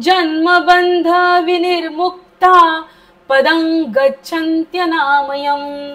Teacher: विनिर्मुक्ताच्या नंतरचा विसर्ग अर्धा बोलायचा आहे, म्हणजे हपका द्यायचाय पोटाला, श्वास बाहेर सोडायचा आहे